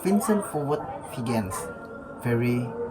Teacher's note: Fokus labidanental gigi atau menyentuh bibir bawahan dengan getaran atau Fizis. Tips, Rasakan getaran di bibir bawah saat mengucapkan V berbeda dengan F yang tidak bergetar